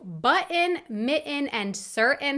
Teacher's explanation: I have received several comments about the fact that sometimes, in some words, I drop the Ts and replace them instead with a glottal stop